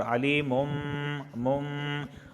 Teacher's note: تنوین کے بعد با آیا تو اس وجہ سے یہاں پہ اقلاب ہوگا